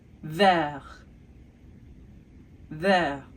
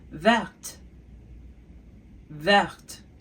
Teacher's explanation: in the masculine form, we don't say the T, but in the feminine form, we say the T because it ends with an E